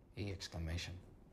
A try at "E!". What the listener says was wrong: It's just E. I think the exclamation is silent.